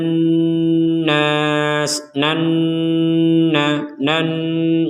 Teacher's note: berdengungnya di rongga di rongga hidung dua harakat